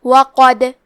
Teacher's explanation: قلقلہ کا معنی ہے حرف ساکن کو ہلانا تو ہم حرف دال کو ہلاتے ہوئے یہ کلمہ کو پڑھیں گے · کلمت قد میں حرف القاف کو موٹی آواز میں پڑھیں گے